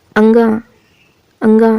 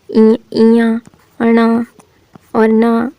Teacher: उच्चारण में वायु ध्वनि मुख के साथ-साथ नाक से भी निकलती है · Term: अनुनासिक वर्ण